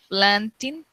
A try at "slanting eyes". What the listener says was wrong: Con S. Slanting eyes. S. With S. Slanting eyes.